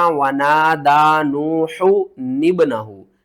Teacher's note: हा को हमने पेश के साथ पढ़ना है और नून को हमने बा के साथ मिलाकर पढ़ना है